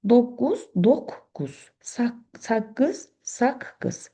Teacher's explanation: Yəni sözün ortasında qoşa q gələndə bu k tələffüz olunur.